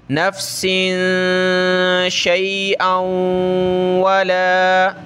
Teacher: اس پر ہم نے تنوین کا اخفا کرنا ہے، ناک میں آواز پیدا کریں گے